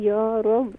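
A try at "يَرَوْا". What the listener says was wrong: या रव नहीं होगा, यरव, यरव।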